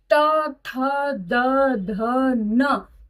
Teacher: ये पांचों वर्ण दांतों को छूकर आप तक पहुंचते हैं ये आवाज, तो इसलिए इसको हम दंत उच्चारण स्थान कहेंगे। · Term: त वर्ग